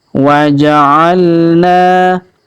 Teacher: kemudian huruf na kita panjangkan, dua harokat karena alif di depannya